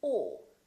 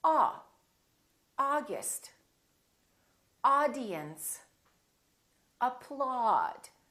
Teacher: We don't say ow. And we don't say the British way. We don't say oh. We say ah.